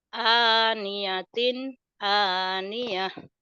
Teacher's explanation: Aniatin jadi aniyah. Taknya jadi tak marbutoh berubah menjadi ha.